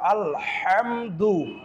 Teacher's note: হা কণ্ঠনালীকে চাপ দিয়ে উচ্চারণ করতে হবে